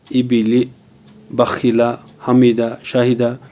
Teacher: ज़ेर को जल्दी पढ़ें, थोड़ा भी न खींचे। ज़ेर की आवाज़ नीचे को जाती है